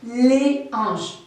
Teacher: c'est un nom où on ne doit pas faire la liaison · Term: H aspiré